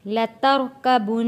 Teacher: لترکبن، را کو موٹا پڑھیں گے، لترکبن، نون کے اوپر تشدید ہے، یہاں ہم نے غنہ ادا کرنا ہے۔